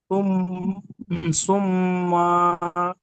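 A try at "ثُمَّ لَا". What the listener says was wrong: মা টান হবে না ভাই, সুম্মালা।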